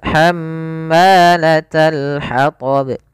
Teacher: Ya, kemudian pelafal ma sendiri ada bacaan mad tabi'i, panjangnya 2 harakat yaitu fathah bertemu dengan alif